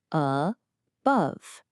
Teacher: It works the same way as ago. The stress is on the second syllable, bove. So that just relaxes into a schwa. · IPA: /ə/